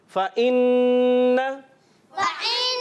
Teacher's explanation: فإن, فإن, نون مشدد میں ایک الف کا غنہ ہوگا, حمزہ کو عین کی آواز سے بدلیں گے نہیں, حمزہ کلیئر ہونا چاہیے